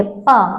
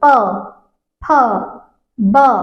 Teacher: जब आप प बोलेंगे प, तो आप देखेंगे ये जो आपके लिप हैं, ये जो आपके होठ हैं, ये एक दूसरे से टच हो रहे हैं। प, फ, ब, अगर ये एक दूसरे से टच नहीं होंगे तो आप इनको, इन वर्णों को बोल नहीं पाएंगे। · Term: ओष्ठ